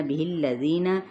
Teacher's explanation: زی پہ یا مدہ، نون کی حرکت کو کھینچیں گے نہیں. یا خا پر ہے، الف اس کے تابع ہو جائے گا تو الف بھی ساتھ ہی پر پڑا جائے گا.